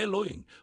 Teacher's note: A pronúncia correta é Elohim. O EH inicial é curto como um estalo de dedos. O Lo é longo como uma onda quebrando na praia. O em final é vibrante como um enxame de abelhas sagradas.